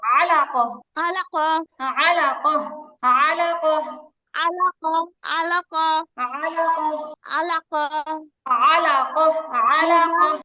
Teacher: তারপরে হারকা, আলাইক, আইন, আইন শক্ত হবে, গলায় চাপ লাগবে।